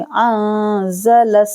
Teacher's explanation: نون ساکن کے بعد زا ہے تو یہاں پر اخفا کیا جائے گا، تو یہاں پر ہم کلیئر نہیں پڑھیں گے، چھپائیں گے اور غنہ کریں گے